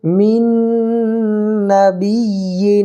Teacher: یہاں دیکھیے قاعدہ کیا ہے کہ تنوین یا نون ساکن کے بعد یومن کے 4 حرفوں میں سے کوئی بھی حرف آ جائے تو ادغام مع الغنہ ہوگا۔ تو دیکھیے نون ساکن کے بعد یومن کے 4 حرفوں میں سے نون آ رہا ہے نا، تو یہاں پر ادغام مع الغنہ ہوگا